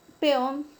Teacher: La palabra peón, la mayor fuerza de voz recae sobre la última sílaba. Termina en una consonante N y según las reglas de tildación es una palabra aguda.